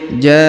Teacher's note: huruf ja dipanjangkan 5 harokat karena di atasnya terdapat tanda garis bacaan panjang 5 harokat.